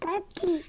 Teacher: Here, the velar stop g is replaced with an alveolar stop d. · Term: velar fronting